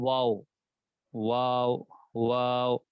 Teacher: واو کی ادائیگی دونوں ہونٹوں کو گول کرنے سے ہے، بس، یعنی کا تعلق ہونٹوں کے دونوں ہونٹوں کو گول کرنے سے۔